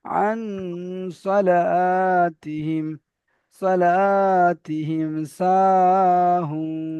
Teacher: الذين هم আন সালা, নুন সাকিনটা এখানে গুন্না হবে, কারণ নুন সাকিনের পরে সদ এসেছে, সদ ইকফার অক্ষর, তাই এখানে নুন সাকিনটা গুন্না করে পড়তে হবে একালি পরিমাণ